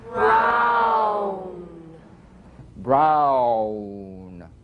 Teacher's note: if you move quickly from the widest to the smallest opening, ow, as in brown.